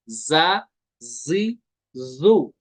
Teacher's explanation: इसका मखरज भी आपको पता होगा, जा का मखरज है जुबान की नोक और दोनों दांतों के अंदरूनी किनारे।